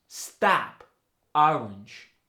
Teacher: the short o goes to the a sound it tends to be an intense unrounded sound in the lower part of the mouth